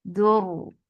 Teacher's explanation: Ra will get sifa of tawassit, and tawassit is medium flow of sound. Ra will be heavy too because there is dhamma before it.